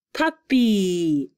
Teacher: two syllable words that ended in y and the y sounded like a long e